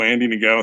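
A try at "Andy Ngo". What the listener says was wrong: Stop pronouncing the end, dude. it like it's go, dude.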